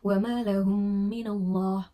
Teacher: kondisi tertutup dan sedikit bergetar untuk menengungkan bacaan mim tersebut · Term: idgham mimi